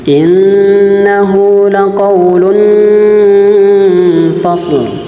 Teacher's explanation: nun yang bertasdid berharokat fathah maka dia ditekan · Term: gunnah